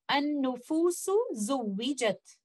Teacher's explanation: For example, here, letter Sin and letter Za, both of them are coming from the same makhraj, which is tip of the tongue plus the lower part of the inner surface of lower two incisors, but they are different in sifat. Sin is a letter of hams, while za is a letter of jahar. So when they appear next to each other, they are considered as mutajaanisaan letters. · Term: kabir relationship